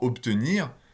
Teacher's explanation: comme on est devant une obstruante sourde, ce B est devenu un P. Et là, maintenant, en français, il n'y a aucun doute là-dessus, c'est bien un P.